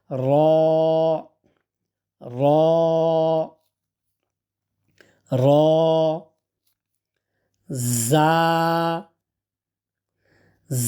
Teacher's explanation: জিহ্বার মাথাটা উপরের দাঁতের গোড়ার সাথে লাগিয়ে হালকা কাঁপনি সহ উচ্চারণ হবে